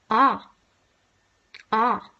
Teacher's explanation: the vowel backness is back which means that your tongue should be positioned as far back if you can put it without creating a constriction · This vowel is something we call an open, back, unrounded vowel. Open means that your tongue should be as far away from the roof of your mouth as possible.